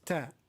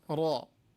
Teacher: ta is light and ra is heavy here